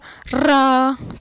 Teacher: जो आगे वाला जीभ का हिस्सा है ना वो र बोलने में कांपने लगता है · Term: लुंठित